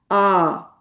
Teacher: इसका मखरज मुंह और हलक का खाली हिस्सा है जिसे जौफ कहते हैं। आवाज खाली मुंह से बगैर टक्कर लगाए बाहर निकलती है। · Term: अलिफ